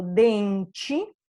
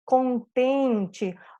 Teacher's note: se eu tenho palavras terminadas em e, ele vai ser pronunciado como i, então a minha última sílaba te vai ser pronunciada ti também